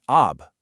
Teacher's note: There's no ah, u, or e sound here. You just pronounce the plain consonant sound. So if you have an ah sound followed by a b with a sukun, you get ab.